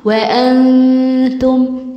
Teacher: وام التاء هتخفي النون، وانتم مش وانتم، دي تاء مش طاء